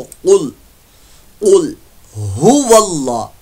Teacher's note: कुल यहां पर लाम साकिन में कलकला नहीं करना, कौफ रुफ़े मुस्तालिया में से है, पुर मोटा पड़ जाएगा